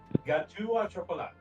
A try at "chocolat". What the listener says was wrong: How do you pronounce that last word? You pronounced the T, didn't you? No French and our stupid fucking silent letters.